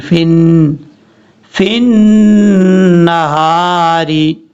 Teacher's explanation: ان لکا فی النہاری، فا کو نون سے کنیکٹ کریں گے، نون کے اوپر شد کی وجہ سے غنہ کیا جائے گا ، بیچ میں یا حمزہ اور لام کو چھوڑ دیں گے،